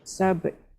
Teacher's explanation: Dia sama je masa wasal bunyi ba macam tu, masa wakaf pun ba macam tu. Yang berubah hanya huruf yang terakhir, huruf ta tu bunyinya lebih kurang 1/3.